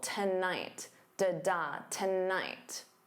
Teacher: So notice that syllable stress. The first syllable is unstressed. So to becomes that unstressed t. And then night is your stressed syllable.